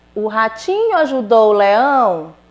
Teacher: houve uma mudança na entonação da minha voz então eu li a frase e esta frase está emitindo o que uma pergunta